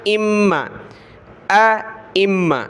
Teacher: میم کے اوپر تشدید ہے تو ہم نے غنہ کرنا ہے، ناک میں آواز پیدا کریں گے